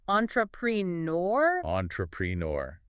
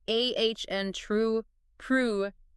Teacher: So in American English, the correct pronunciation is more like ah n true prhure. Notice how that stress shifts to the end. And those first few vowels, they change quite a bit.